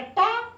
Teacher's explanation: जीभ ऊपर जा रही है, ताल से ऊपर वाले भाग को छू रही है। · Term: मूर्धा